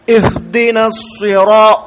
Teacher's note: സ്വാദാകട്ടെ ഇസ്തിഅല ആണ്, നാവ് ഉയർത്തി പറയേണ്ട അക്ഷരമാണ്. മാത്രവുമല്ല ഈ സ്വാദ് എപ്പോഴും തഫ്ഖീം സ്വരഭാരത്തോടു കൂടി പറയേണ്ട ഹർഫാണ്.